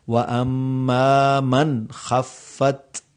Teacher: اب یہاں نون ہے کیونکہ اس کے آگے حروف حلقی ہیں تو یہاں پر اظہار ہوگا، اخفا نہیں ہوگا